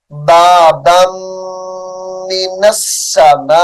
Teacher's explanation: بابن کی جو دوسری با ہے میم مشدد کے ساتھ ملائیں گے اور غنہ کریں گے